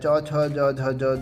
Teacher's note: चौ छ ज झ जो भी है हमारा तालव्य के अंदर आता है।